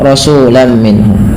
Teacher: Yaitu idgham diartikan dengan memasukkan apa yang dimasukkan adalah bunyi suara tanwinnya kepada huruf setelahnya. Rasulan menjadi rasulam sehingga terdengar bunyi suara huruf mim.